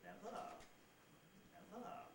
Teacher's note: the nucleus itself is more or less level at a mid to low pitch, and then the single tail syllable actually falls. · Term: rise fall